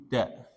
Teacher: dal dal ujung lidah dengan ini pangkal gigi